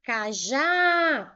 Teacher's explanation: O já eu chamei mais forte. Então, essa palavra, ela é uma palavra oxítona, porque a última sílaba é a mais forte.